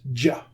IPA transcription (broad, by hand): dʒ